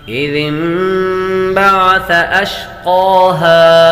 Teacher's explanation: نون ساکن کے بعد با آ جائے تو نون ساکن کو میم سے بدل کر اخفا کر کے غنہ کر کے پڑھیں گے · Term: اقلاب